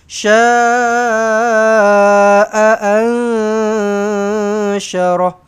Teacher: nun kosong bertemu dengan syin ni pastikan kita samar-samarkan kita dengungkan dengan dua harakat di situ ikhfa hakiki